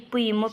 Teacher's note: இரு மெய்களும் மேலிதழும் கீழிதழும் பொருந்துவதால் பிறக்கிறது. மேலுதடும் கீழுதடும் பொருந்துறதால இப்பு இம்மு பிறக்கிறது.